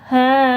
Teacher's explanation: ha dibaca ha panjangnya dua karena berharakat fathah berdiri